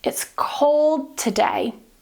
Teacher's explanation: we're just going to cut the 'duh' here in 'cold', and move straight to the 't' in 'today'